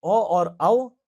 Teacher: ओ और औ ये कंठ और ओष्ठ की सहायता से निकलते हैं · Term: कंठोष्टम